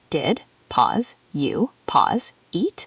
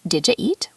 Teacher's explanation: But a native speaker says, "Did ya eat?" or "Did ya eat?" The D at the end of did and the Y at the beginning of you blend together. The U becomes really short, almost disappears. It's not three separate words, it's one connected phrase. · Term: connected speech